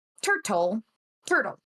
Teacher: So our speech mechanism makes use of something called co-articulation where you're preparing for the next sound as you're saying the first one. So it's easier to do a quick and easy like tongue tap with the da instead of a full t, because that takes more effort. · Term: alveolar tap